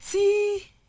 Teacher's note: Because it's also a noun, it is the T, which is the first syllable, that is stressed